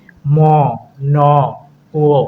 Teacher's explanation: কিছু বাতাস নাক দিয়েও বের হয়। যার কারণে নাসিক্য ব্যঞ্জনের সৃষ্টি হয়।